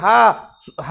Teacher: तो ह को काकल वर्ण कहा जाता है